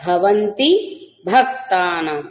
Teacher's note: ఈ రెండు చోట్ల కూడా మహాప్రాణ భకారాలు పలకాలి